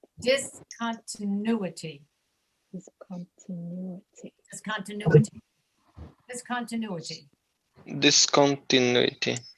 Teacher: it's the U sound that's accented